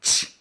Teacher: The CH sound is a combination of teet, that voiceless stop sound, and that voiceless fricative of sh. So if you put those together, that makes ch.